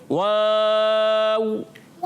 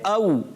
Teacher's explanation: واو تو ہوتا ہی ہونٹوں کی گولائی سے ہے، جی ہاں، واو کا مخرج ہے ہونٹوں کی گولائی۔